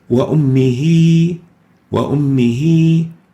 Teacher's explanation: This ha is also a pronoun ha al-damir al-ghaib, and it is followed by a small vowel, a small ya, and if we concentrate on it, ha with a kasra followed by a ya, but this ya is in brown, not in red, and we pronounce this ha with kasra as if there is a ya after it. So instead of saying وَأُمِّهِ, we say وَأُمِّهِ وَأُمِّهِ.